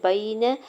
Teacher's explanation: یا ساکن سے پہلے با کے اوپر زبر یا لین ہو رہا ہے، نرمی سے موڑتے ہوئے ادا کریں گے۔ نون کے زبر کو بغیر کھینچے ہوئے ادا کرنا ہے۔